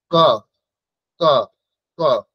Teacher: দেখুন সোজা একদম কণ্ঠ থেকে আসছে সেই জন্য এই বর্ণগুলি হচ্ছে কণ্ঠ বর্ণ এদের উচ্চারণ স্থান হচ্ছে